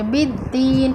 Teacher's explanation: बिद्दीन में दाल का मखरज ज़बान की नोक सामने के ऊपर वाले दो दांतों के किनारे से लगाकर अदा करेंगे।